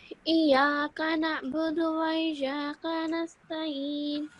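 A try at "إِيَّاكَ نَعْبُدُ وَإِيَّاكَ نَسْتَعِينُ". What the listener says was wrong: I think you're pronouncing the kaf sound with a thick sound again. Try to pronounce it with a thin sound. Iyaka.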